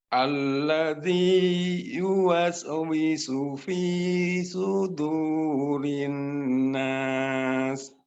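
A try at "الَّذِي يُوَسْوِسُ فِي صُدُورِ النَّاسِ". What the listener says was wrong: Diayunkan lagi, Pak. Diayunkan lagi. Alladzi yuwaswisu fi sudurin nas.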